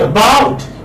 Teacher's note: giving the stress on the second syllable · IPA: /əbaut/